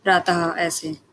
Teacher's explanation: विसर्ग का उच्चारण हा के समान होता है।